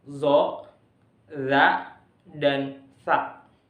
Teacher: keluarnya huruf dari atas gigi bertemu dengan ujung lidah. Ujung lidah bertemu dengan gigi atas atau di antara gigi. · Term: interdental